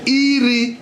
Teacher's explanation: The first tone is up. The second tone is horizontal.